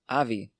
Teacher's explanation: en las Islas Baleares todavía tienen el sonido [v]